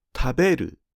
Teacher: The dictionary form is 食べる (LHL), and the last mora drops in pitch. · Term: pitch drop